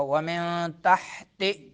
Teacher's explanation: ومن نون ساکن، اس سے ما بعد کیا آ رہا ہے؟ تا آ رہا ہے، تو کیا ہوگا؟ اخفا ہوگا